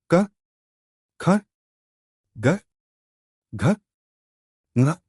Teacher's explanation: इन ध्वनियों का उच्चारण गले के अंदरूनी भाग से होता है। इसीलिए इन्हें कंठ्य ध्वनियां कहते हैं।